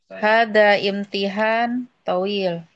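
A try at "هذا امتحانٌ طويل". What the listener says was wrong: Untuk pemenggalan katanya hadza imtihanun tawil. Jadi had ini ujian yang panjang. Bukan hadza imtihan tawil. Itu kalau itu pakai al. Hadza imtihan tawil.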